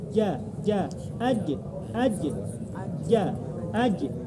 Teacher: Dan ketika disukunkan qalqalah itu mantul.